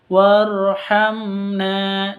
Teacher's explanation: mim sukun bertemu dengan Nun atau mim mati bertemu dengan Nun jelas bacanya karena izhar syafawi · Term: izhar safawi